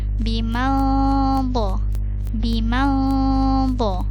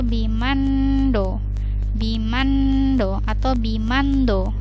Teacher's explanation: Kemudian di sini ada nun sukun bertemu dha, dia dihukumi ikhfa, maka nun sukunnya di sini dibaca dengan samar-samar. Tidak terlalu jelas.